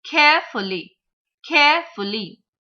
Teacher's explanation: Now the 3-syllabic words are there. So we'll again stress on the first syllable.